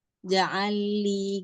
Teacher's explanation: langsung dimasukkan ke lam yang kedua ya. Diidghamkan ke lam yang kedua. Idgham mutamasilain, lam ketemu lam ya.